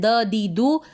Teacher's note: दाल को हम ज़बान सामने टच करते हैं ना, ऊपर के दांतों को